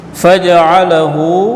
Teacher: hu di sini mad silah qasirah, ini satu alif